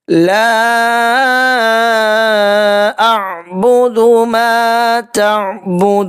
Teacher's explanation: لا کے اوپر بھی مد منفصل ہے، 2.5 سے 3 الف کے برابر کھینچ کر ادا کریں گے